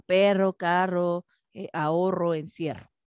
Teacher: este sonido de ese fonema de vibración múltiple entre dos vocales